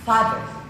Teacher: Tongue tip is brought forward just below the upper teeth, interdental or into slight contact with back of the upper teeth dental to create a construction between the tongue and teeth and upper teeth. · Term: hard TH